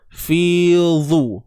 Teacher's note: huruf dha kena tebal. Baris depan dhu.